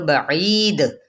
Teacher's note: وقف بالاسکان بھی ہے اور دال حروف قلقلہ میں سے ہے وقف کیا تو بعید یہ قلقلہ ہو گیا یعنی ہلانا ٹھیک ہے جنبش دینا